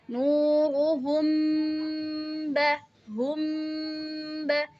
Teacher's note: ada mim sukun bertemu dengan ba maka kita bacanya ee samar-samar jadi mimnya itu agak ditahan sebentar ditahan kira sekira-kira dua harakat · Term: Ikfa Syafawi